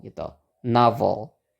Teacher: suku kata yang ada O-nya itu ada tekanannya. Makanya di sini kita bukan pakai schwa tapi pakai A gitu ya. Jadi bacanya novel gitu.